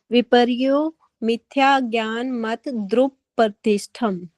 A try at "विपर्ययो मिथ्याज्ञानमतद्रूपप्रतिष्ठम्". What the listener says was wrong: हाँ, थोड़ा सा जो आपका या का उच्चारण है उसको डबल साउंड होना चाहिए आपका। विपर्ययो मिथ्या ज्ञान। विपर्ययो मिथ्या ज्ञान मत द्रूप प्रतिष्ठम।